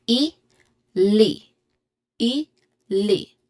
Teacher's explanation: Le e. It's like you're saying e but your tongue is on the roof of your mouth. just behind your teeth. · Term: letter L sound